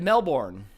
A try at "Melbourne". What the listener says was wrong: I think you have to get rid of a syllable there. like, you don't pronounce the R at all. It's more like Melbourne.